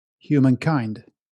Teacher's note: When pronouncing the title, the stress should be put on the last syllable, kind.